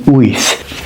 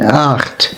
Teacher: that soft TH sound in Welsh and that soft kind of gentle guttural CH in Dutch